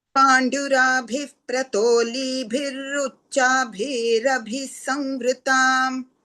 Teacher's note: उच्चाभिरभिसंवृताम् अट्टालकशताकीर्णां पताकाध्वजशोभिताम्. So in this Pandurabhi, that pa and ra is dirgha. In Pratolibhi, that to and li is dirgha. And in Samvrutam, that ta and ucha, in cha is dirgha, and Samvrita ta is dirgha.